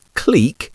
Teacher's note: did you say clique with the long E vowel sound, clique? Well, if you did, that is how most Brits would pronounce this word.